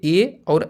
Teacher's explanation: कंठ तालु मतलब जो कंठ और तालु दोनों से बोले जाएं